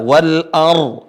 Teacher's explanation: Ra sukun sebelumnya fathah, dibaca tebal. Wal ar. Ra sukunnya dibaca tebal.